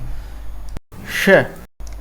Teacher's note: हमने देखा जीभ तालव्य से स्पर्श कर रही है।